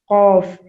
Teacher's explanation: زبان کا آخری حصہ اور کوے کا شروع کا حصہ، کوے کا ابتدائی حصہ جب ہم آپس میں ملائیں گے تو حرف قوف ادا ہوگا